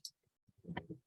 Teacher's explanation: So if you manipulate the clip to try and separate out the individual elements of the word, you can hear that actually the second syllable isn't a T sound at all. It's more of a hard G sound.